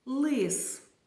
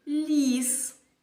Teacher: звук л вимовляється кінчик язика притискується до верхніх зубів А при вимові ль до твердого піднебіння притискається середня